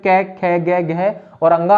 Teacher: कंठे ध्वनि की अगर हम बात करते हैं तो कंठे ध्वनि हो जाएंगी आपकी जो कै, ख, ग, घ और अंगा है